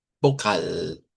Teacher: Vocal con una a más larga